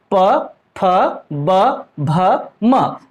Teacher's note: इनका उच्चारण स्थल हो जाएगा ओठ से। देखिए ओष्ठ से हम कर रहे हैं, ओठ से प, फ, ब, भ, म, तो ओष्ठ से इनका उच्चारण स्थल है, इसलिए यह कहलाएंगे ओष्ठ्य।